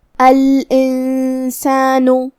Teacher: سین حروف الاخفاء میں سے ہے، تو ہم نون کو بغیر ظاہر کیے ہوئے لیکن غنہ کے ساتھ یہ حکم کو ادا کریں گے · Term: حکم الاخفاء